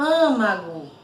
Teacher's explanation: Então o som tá um som mais fechado, mais abafado